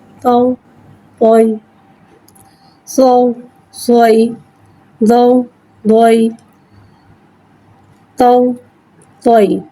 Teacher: یا ساکن سے پہلے زبر آ رہا ہے یالین ہو رہا ہے لہذا یالین کو بغیر کھینچے بغیر جھٹکا دیے نرمی سے معروف پڑھیں گے۔ تو یا زبر توئی تو توئی، سو سوئی، دو دوئی، تو توئی۔